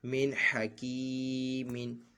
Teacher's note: حکی میم دو زیر من حکیمن۔ یہاں پہ بھی اظہار ہے، نون ساکن کے بعد حروف حلقی میں سے ہا ہے، یہاں پہ بھی نون ساکن میں غنہ نہیں کیا جائے گا